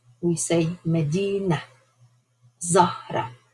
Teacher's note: a very important thing about the ta marbuta is that actually you don't hear a ta sound.